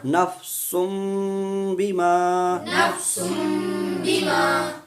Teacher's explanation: یہاں پہ بھی وہی قاعدہ ہے کہ تنوین کے بعد فوراً حرف با آ گیا، اس لیے نفسن سے نفسم ہو گیا